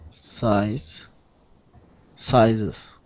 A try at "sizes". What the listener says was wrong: Good. Exactly. That's the difference between singular and plural.